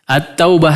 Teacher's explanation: lemnya tidak terbaca sama sekali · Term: melebur